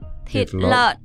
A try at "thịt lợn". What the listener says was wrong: Thịt lợn, but you don't hear the N. No, I don't hear the N.